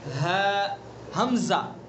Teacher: ہے حمزہ دونوں کا مخرج ایک. اقصی حلق یعنی حلق کا آخری سینے کی طرف والا حصہ